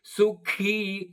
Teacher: ಸು ಮಹಾಪ್ರಾಣದ ಖೀ ದೀರ್ಘ